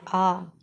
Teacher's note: जिसमें केवल एक ही वर्ण आता है अपना। वो आ बोलते समय जीवा के मध्य एक दबाव होता है · जीभ का मध्य हिस्सा सक्रिय होता है, जिसमें केवल एक ही वर्ण आता है अपना, वो आ। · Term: मध्य भाग